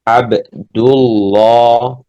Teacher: jadi lamnya dibaca tebal. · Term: tafkhim